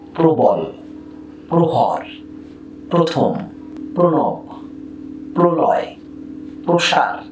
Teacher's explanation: এই প্র শব্দের শুরুতে এই পয় রফলা হয়ে গেল প্রো। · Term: ওকার